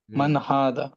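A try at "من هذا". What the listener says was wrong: ஆமா, ஹா ஹாண்ட் வருங்க. ஹான் அந்த தொண்டையில இருந்து அந்த ஹாக் வர சவுண்ட் மாதிரி வரப்படாது. அது கொஞ்சம் கவனம் எடுங்க. அதே மாதிரி ஹாதா, மன் ஹாதா.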